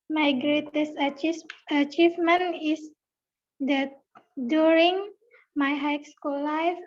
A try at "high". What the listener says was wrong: High school, ini dibaca high bukan hike ya, tapi high.